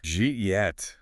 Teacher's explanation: The entire phrase, did you eat, has completely assimilated into the sound jeet.